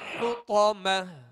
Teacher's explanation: اسے کھینچ کر ادا کریں گے۔ وَمَا أدراك ما الحطمة حطمة حا کو وسط حلق سے ادا کریں گے اور طا کو پر پڑھیں گے اور آخر میں گول تا کو ہائے ساکنہ سے بدل دیں